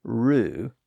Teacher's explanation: notice how little movement there is between the initial R sound and the u vowel sound that follows it